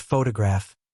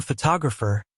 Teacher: in the word photograph, the stress is on the first syllable. But in photographer, it's on the second syllable.